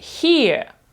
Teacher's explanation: оце коротке е в кінці воно таке невиражене дуже коротке майже забуте